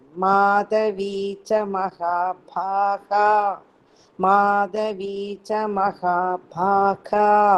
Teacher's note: Dha Mahaprana, Bha Mahaprana.